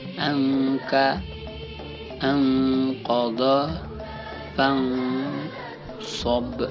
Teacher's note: Dibaca samar-samar di antara idhar dan idgham.